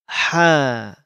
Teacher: dikeluarkan dari tengah tenggorokan